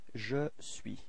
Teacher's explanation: So you can notice that the final S is not pronounced.